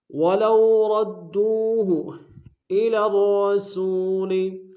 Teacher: وَلَوْ رَدُّوهُ إِلَى الرَّسُولِ، الر میں لام کو را کے سامنے آئیں گے، را کے اوپر شدہ زور دیں گے، دونوں را کو موٹا ادا کریں گے